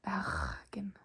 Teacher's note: For example, the Bergen dialect, bergensk, they don't roll their R's. They have skarre R, which sounds like bergen, like so.